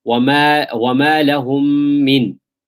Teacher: meme sakin followed by another meme, merge the two. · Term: idgham mithlain saghir